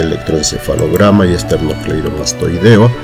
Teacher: en el caso de electroencefalograma y esternocleidomastoideo la sílaba tónica es la penúltima y son palabras graves